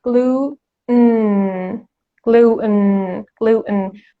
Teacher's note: When you want to pronounce the T sound, you just don't pronounce it and you push the air through your nose to come out.